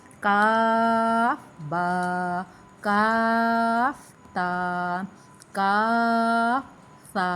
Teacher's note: ان کاف کو 3 الف کی مقدار دراز کرنا ہے، سا کو، تا کو اور با کو، ان کو 1 الف کی مقدار لمبا کرنا ہے۔ یہ نہیں کہ ہم دونوں کو برابر پڑھتے جا رہے، کاف سا کاف تا، اس طریقے نہیں پڑھنا۔